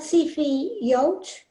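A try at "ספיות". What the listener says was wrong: That is correct, except for the second letter is not fe. It's pay. That's because it has a penny in it. So either of those is a good way to remember that.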